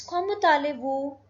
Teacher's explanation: the last word is T and the next word starts with a vowel. So this T will be pronounced. It becomes thale and the third word is vous.